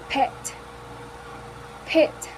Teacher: The first one is p, p, p, which is voiceless because the vocal cords don't vibrate. The point of articulation is bilabial because both lips comes together and are in contact. The manner of articulation is stop because the airflow is stopped and then is suddenly released.